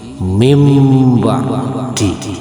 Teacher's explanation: Suara nun matinya diganti menjadi mim mati.